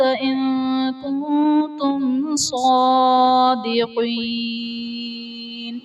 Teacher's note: کنتم صادقین میں میم ساکن کے بعد حرف با اور میم کے علاوہ صاد آ رہا ہے تو یہاں پر اظہار شفوی کا قاعدہ ہوگا، یعنی میم ساکن میں ہم غنہ نہیں کریں گے